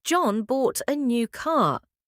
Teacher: And you want to confirm that John bought it, not Sarah, you might say, John bought a new car. Here, John is stressed to show emphasis on who bought the car.